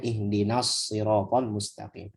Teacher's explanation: Nah, ketemu shad, nunnya tipis, shad tebal. Maka jangan ditebelin nunnya.